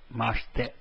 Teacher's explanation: the second I which comes towards the end is silent